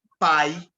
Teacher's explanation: eu tenho uma vogal A e uma semivogal I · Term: Decrescente